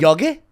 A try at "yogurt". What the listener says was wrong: it's got a tea on there yogurt you're saying Yogi